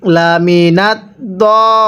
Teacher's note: এই দদের মধ্যে আমরা আগে 4 আলিফ টান দিয়ে দিব, এরপরে দদকে লামের সাথে লাগাবো, তাহলে এই দল লিনটা সহি শুদ্ধ উচ্চারণ হবে।